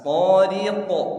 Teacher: huruf qaf qalqalah di ujung, pantulnya bukan ke bawah tapi ke atas